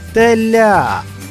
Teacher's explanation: у цьому слові наголошений склад ля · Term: наголос